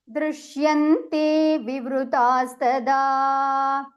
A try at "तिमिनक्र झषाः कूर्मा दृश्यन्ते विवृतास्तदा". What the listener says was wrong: one more time there was a slight break in your line